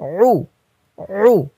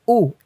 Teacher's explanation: উ হামজা পেশ উ এটা যেমন নরম তার থেকে শক্ত হবে আইন পেশ উ